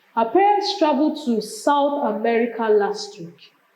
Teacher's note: Emphasis is on America.